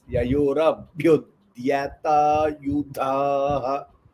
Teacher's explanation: And dya is Alpa Prana. You should not give stress for dya. It's like vidya.